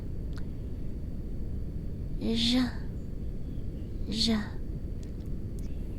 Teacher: This is the soft ZH sound. It's like the S in vision, but lighter.